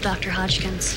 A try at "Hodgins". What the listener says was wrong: Hodgins. There's no K.